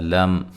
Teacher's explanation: یہاں میم ساکن کا اظہار ہے، غنہ نہیں کریں گے